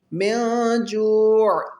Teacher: واو ساکن سے پہلے پیش ہے، اس کو بھی تھوڑا اسٹریچ کر کے لمبا کر کے پڑھیں گے